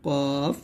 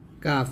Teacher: কাফটা কিন্তু কফের মত মোটা করা যাবে না কাফটা হবে গোড়া থেকে একটু আগে জিহ্বার অংশটি তার বরাবর উপরে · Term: পাতলা